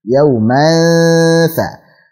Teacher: Ditipiskan gunnahnya karena di sini ketemu dengan huruf tha. Tha huruf tipis sehingga gunnahnya ikut tipis juga. Yauman tha.